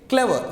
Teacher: Stress on first syllable.